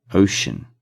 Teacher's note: In ocean, the C makes a sh sound.